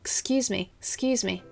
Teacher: 然后说得更快的时候会听起来像 Sorry, excuse me, excuse me，就像前面的元音不存在